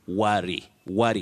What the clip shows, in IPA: wʌri